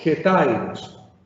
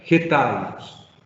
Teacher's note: O sea, estoy diciendo que esa H que no tiene sonido en español porque realmente es muda, realmente la debo pronunciar como si fuera una especie de J